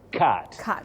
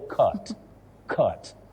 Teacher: the low front sound a, cat. But the second one, you use the short mid-central sound o.